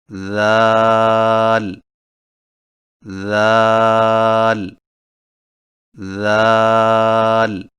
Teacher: ذال کی ادائیگی میں زبان کی نوک کو سامنے والے اوپر کے دو دانتوں کے اندرونی کناروں سے نرمی سے لگا کر باریک آواز میں پڑھیں